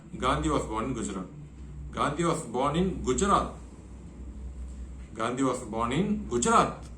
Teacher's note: So the focus is on the word Gujarat. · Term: neutral focus